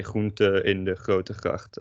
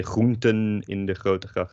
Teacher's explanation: in groenten, don't emphasize the N as much.